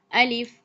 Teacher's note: جو الف ہے اس کو ہم دراز کر کے نہیں پڑھیں گے، یعنی کہ اس کو کھینچ کر ہم نہیں پڑھیں گے، اس کو جلدی سے ادا کر دیں گے